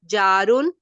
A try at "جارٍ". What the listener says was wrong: بیٹا جارین ہے دو زیر کے ساتھ، اینڈ میں جی جن کے جریان، جریان، ٹھیک ہے.